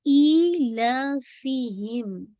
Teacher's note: make sure ई 2 count, ला 2 count, फी एक count